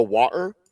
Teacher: the middle T gets swallowed